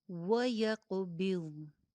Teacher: واو پہ ہونٹ گول کیجئے اور ضاد کی بھی موٹی ادائیگی کیجئے